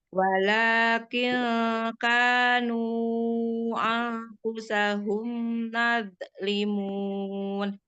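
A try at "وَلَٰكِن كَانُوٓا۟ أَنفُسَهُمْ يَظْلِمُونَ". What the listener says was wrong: Huruf ya, Mi. Yazlimun.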